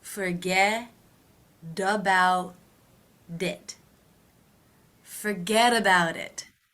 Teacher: remember those T's between vowel sounds will be pronounced as D's.